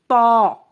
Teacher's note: تا زبان کی نوک جو جو اوپر والے دو دانت ہیں اس کی جڑ سے لگے گی. تا ادا کرتے وقت زبان سختی کے ساتھ اوپر تالو سے لگ جاتی ہے